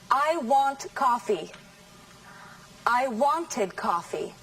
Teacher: Where's the stress in wanted? On the first syllable.